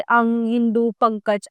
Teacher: इसका उच्चारण करते समय हवा नाक से बाहर निकलती है।